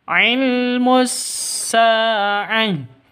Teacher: Sa panjang dua ketukan. Karena ada alif diawali dengan fat fathah. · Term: mad asli